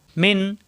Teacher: এই নুন সাকিনের পরে আইন আসছে এখানে ইজার হবে স্পষ্ট হবে এখানে কোন গুন্না হবে না